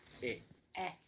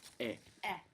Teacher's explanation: smile and open up e e a little like the E on yeah like when you say yeah but it also stops quite sharply